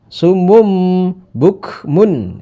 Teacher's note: iqlab huruf iqlab itu ada satu ba cuma hanya ba ya Jadi tanwunnya dimasukkan di dalam ee ba tapi suaranya seperti ada mimnya